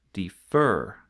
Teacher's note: the stress falls at the end. Defer, not defer.